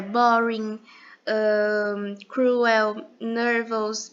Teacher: a gente sempre vai pronunciar o r como o sotaque caipira ou seja a gente sempre vai dar aquela dobrada na língua